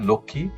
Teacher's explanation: সংযুক্ত ব্যঞ্জনের সঙ্গে যুক্ত মফলা উচ্চারিত হয় না, তবে সংযুক্ত ব্যঞ্জনে যুক্ত স্বরধ্বনিটি আনুনাসিক বা সানুনাসিক উচ্চারিত হয়।